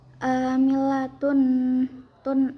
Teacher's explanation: Cara bacanya langsung masukkan ke nun tanwinnya sambil berdengung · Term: idgham bigunah